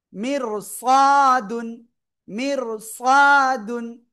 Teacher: র হরফে সাকিন এবং তার পরের অক্ষর, এই 7টা অক্ষরের কোনো একটা যদি হয়, খ সদ জদ গইন কফ ত জ, ঠিক আছে, তাহলে কি হবে? র অক্ষরটা মোটা আওয়াজে পড়তে হবে